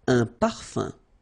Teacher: So remember, even if you've got this UM like that, phonetically it's exactly the same thing as if you would have UN. So it's nasal and it's un. So it really goes in your nose. You don't pronounce the M at all. Un. Okay?